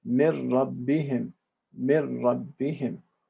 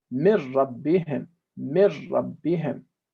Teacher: It's complete merging with no traces left. The traces of nasal nun have disappeared. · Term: idgham bila ghunna